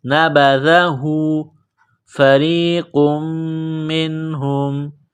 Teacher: نقطہ والا قاف ہے بڑا قاف اس کو موٹا کرنا ہے را کو یا کے ساتھ ملانا ہے را کو باریک کرنا